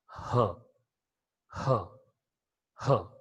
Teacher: The vocal cords or the glottis is wide apart, it is totally open, without any hindrance, without any buzzing sound. The air coming from the lungs is passing through the vocal cords, and even in the mouth cavity, there is no obstruction at any articulator, that of passive articulator and active articulator. · So this is a voiceless, glottal, fricative, consonant sound.